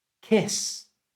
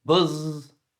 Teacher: no vibration for kiss because it's voiceless but buzz you feel the vibration it's voiced